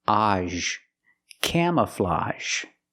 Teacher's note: And we have this word, camouflage. Again, the AGE makes the open sound plus the zh sound.